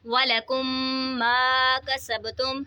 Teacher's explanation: میم ساکن ہے، میم ساکن کے بعد دوسری میم آ رہی ہے تو یہاں پہ ادغام شفوی ہوگا، یعنی ہم نے یہاں پر غنہ کر کے پڑھنا ہے